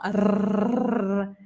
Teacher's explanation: En francés no usamos la lengua, la dejamos dormida en la boca para hacer la R. Ya en español tenemos que hacer vibrar la lengua arriba